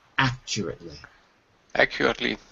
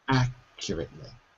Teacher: so the stress is actually on the first syllable